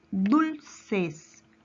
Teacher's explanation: su mayor fuerza de voz recae en la penúltima sílaba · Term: palabra grave